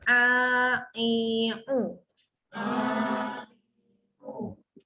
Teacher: Okey, jangan dekat hidung. Dia bukan sengal kat hidung. Dia tekan di tengah-tengah kerongkong. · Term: ain